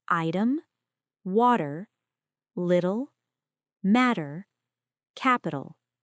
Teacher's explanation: It is a quick tongue tap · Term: flap D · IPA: /ɾ/